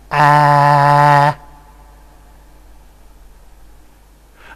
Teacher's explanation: two further points the next one is a reference point where the tongue is extremely low and has a very much front quality the most front quality and the result would be something like ah and finally we